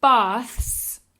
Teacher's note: This is the theta. This is the th sound, as in theta in Spanish. The TH, no vibration.